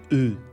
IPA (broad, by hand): ɨ